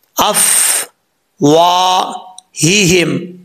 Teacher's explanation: ہا کے نیچے زیر ہے, ہا بھاری ساؤنڈ کے ساتھ پڑھا جائے گا کیونکہ اس کا تعلق اس حلق سے ہے جو سینے کی طرف ہے. 2 ہا یہاں پہ آ رہے ہیں ایک جیسے, تو پڑھتے ہوئے خاص خیال رکھنا ہے, احتیاط سے پڑھنا ہے, دونوں کا مخرج اور دونوں کو واضح کر کے پڑھنا ہے